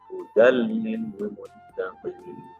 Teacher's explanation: Maka nun mati tanwin bertemu dengan lam. Maka huruf tanwinnya akan langsung dimasukkan ke dalam huruf lam, tapi tidak mendengung karena dia adalah huruf idgham bila gunnah.